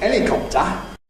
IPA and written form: ˈelɪkɒptə (helicopter)